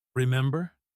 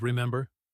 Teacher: If had said "remember" with a falling tone instead, it would sound less like a question and more like he was simply telling her to remember, almost like a command. The rising tone softens it, makes it sound curious and warm rather than demanding.